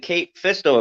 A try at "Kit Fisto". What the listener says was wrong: it sounded like Kate it's Kit Kit Fisto